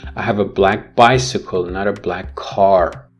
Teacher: here the emphasis is on the nouns which is bicycle and car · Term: contrastive emphasis